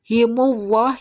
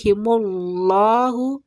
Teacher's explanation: lamnya harus terbaca. Ujung lidah kita harus benar-benar menyentuh langit-langit depan. Jangan dibaca himuwah, tidak, tapi himullahu ya.